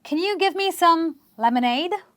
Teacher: You are stressing on the syllable ADE itself.